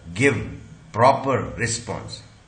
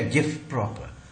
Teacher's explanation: मगर इसको हम फ्लो में बोलते हैं जब कनेक्टेड स्पीच में, तो क्या बन गया, गिव प्रॉपर। ये प क्योंकि वॉइसलेस है इसलिए व का इसने फ बना दिया। तो ऐसा ये रिग्रेसिव असिमिलेशन है।